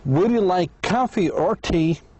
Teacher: the speaker's voice goes up twice, two times. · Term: yes no question